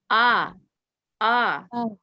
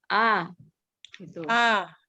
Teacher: A atau Hamzah keluar dari tenggorokan paling bawah.